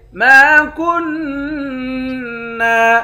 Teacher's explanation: میم کے بعد الف ہے، ایک الف کے مقدار کھینچیں گے، کاف کو نون کے ساتھ ملا کر نون پر غنہ کریں گے، نون مشدد ہے۔